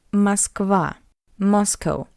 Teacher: So the unstressed O in an unstressed position the letter O read as a weak a